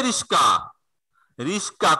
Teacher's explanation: ক এবং দন্ত স, এই দুইটা ধ্বনির মধ্যে পরস্পরের স্থান পরিবর্তন ঘটেছে। যেটি ছিল আগে সেটি গেল পরে, যেটি ছিল পরে সেটি গেল আগে। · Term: ধ্বনি বিপর্যয়